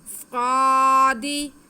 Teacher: سین اور صاد میں فرق یہی ہے کہ سین میں سیٹی کی آواز آتی ہے لیکن موٹا نہیں کیا جاتا، صاد میں سیٹی کی آواز آتی ہے اور موٹا بھی کیا جاتا ہے · صاد پہ کھڑا زبر، اس کو ہم 1 الف کے برابر کھینچیں گے